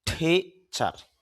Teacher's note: টিতে যখন ট হবে তখন আপনার এসপিরেশন হবে, মুখ থেকে অতিরিক্ত বাতাস বের হবে। তখন ট না বলে আমরা বলবো ঠ, বাতাস বের করব। · শেষে র সাউন্ডটা আমরা একটু কম করতে পারি, সমস্যা নেই